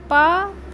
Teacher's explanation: आप जीभ नहीं, आपके ओठ जो है आपस में स्पर्श करते हैं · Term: प वर्ग